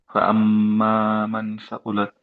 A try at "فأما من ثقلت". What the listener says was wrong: মান, আরেকটু ধরে রাখবো, হ্যাঁ, বিকজ গুন্না। فأما من ثقلت، দুই দুই ধরে রাখবো, রাইট, দুই কাউন্ট, এর জন্য মান ثقلت।